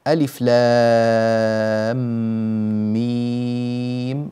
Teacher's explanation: ينبغي العناية بالمد هنا بحيث يكون بمقدار ست حركات في حرف اللام، وكذلك ست حركات في حرف الميم . وهذا المد في لام مد لازم حرفي مثقل، وفي ميم